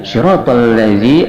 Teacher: Siratal ladzina an'amta alaihim, dilihat dari segi ilmu tajwidnya, siratal ladzi, alif lamnya di sini alif lam syamsiyah, yaitu alif lam bertemu dengan lam, sehingga wajib idgham.